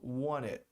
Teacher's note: Esse T geralmente não é pronunciado